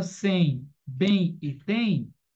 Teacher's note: Já na palavra sem, bem e tem, esse M tem um som de uma vogal, caracterizando como uma semivogal.